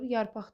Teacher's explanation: Sözün sonu q hərfi ilə yazılır. Söz müstəqil işlənir. Bu zaman x kimi tələffüz olunur.